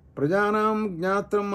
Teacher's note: ప్రజానాం అనేటటువంటి పదాంతంలో ఉన్న మకారానికి దీర్ఘమైనటువంటి ఆకారం అవర్ణం పూర్వంగా ఉంటుంది కనుక అక్కడ ద్విమాత్రాకారం రావటం లేదు